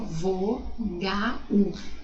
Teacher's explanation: Na verdade eu tenho o som do U e não do L, mas se escreve com L, tá?